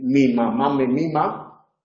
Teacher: Tenemos un fonema nasal bilabial